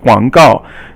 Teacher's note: So guang guang, it means like to spread, and gao is like a message, so it's like an advertisement. Guang is third tone, and gao is fourth tone.